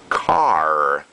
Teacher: in US English it's car you don't say the R so clearly in British English